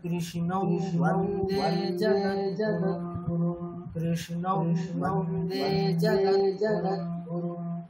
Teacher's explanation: অনুসার আছে, তারপরে কি আছে ব আছে, তাহলে নিয়ম অনুসারে কি হওয়া উচিত, অনুসারটা অনুনাসিক বকারের মতো উচ্চারিত হবে। তাহলে ওই বকারটা কেমন হবে কৃষ্ণম, নাকে একটা বকার হবে, সেটা নাকে কৃষ্ণম বন্দে জগদ্গুরুম, কৃষ্ণম বন্দে জগদ্গুরুম।